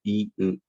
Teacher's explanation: 이는 좀 앞으로, 으는 좀 뒤로